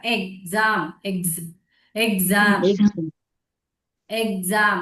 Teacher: நீங்க கையை வச்சு பாருங்க, த்ரோட் நல்லா வைப்ரேட் ஆகும் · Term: வாய்ஸ்டு எக்ஸ் சவுண்டா